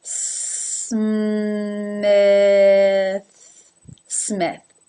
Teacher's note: Smith begins and ends with unvoiced consonants, s and th. In between, me, me, the M into the I as in sit.